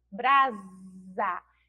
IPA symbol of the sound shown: z